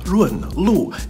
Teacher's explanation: So the run and the lu are both fourth tones. Quick, sharp, abrupt, and falling.